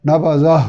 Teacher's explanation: ہا کا مخرج حلق کا وہ حصہ جو سینے کی طرف ہے. نبذہ، یہاں بھی بے توجہی اگر کریں گے تو نبذہ یہ کہیں منہ کے درمیان سے ادا ہو جائے گا اور یہ ہا نہیں ہوگا.